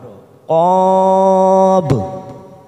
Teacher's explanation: Qab kita panjangkan dulu 4 harokat, lalu kita pantulkan, namanya qalqalah kubra.